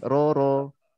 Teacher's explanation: ada getarannya ya, dan getarannya jangan kebanyakan